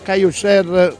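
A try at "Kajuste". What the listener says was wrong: Senza la R. Ma perché ci ha voluto mettere per forza sta R?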